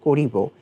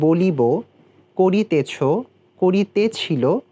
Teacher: ক্রিয়াপদের শেষ অ সাধারণত বিলুপ্ত হয় না এবং উচ্চারণ অ ওকারের মতো শোনা যায়। এখানে যেরকম করিব আমরা সাধারণত লিখি ক, রয় হ্রস্ব ইকার ব, করিব, কিন্তু আমরা এটি যখন বলছি, আমরা উচ্চারণ করছি, তখন কিন্তু আমরা বলছি করিব।